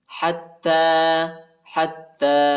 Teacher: تا پر کھڑا زبر آیا ہے، اس کو ایک الف کے مقدار تک کھینچیں گے۔ حتی یا نہیں پڑھا جاتا، یا پر حرکت نہیں۔